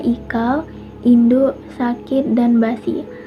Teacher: fonem I, yaitu fonem dengan vokal tertinggi, depan tak bulat